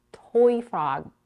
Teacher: not a real frog but a toy frog in this case we stress on the adjective toy a little more than on frog